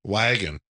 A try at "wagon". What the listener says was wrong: Cuz you said the A. Like I would say the A, not like a Wisconsinite.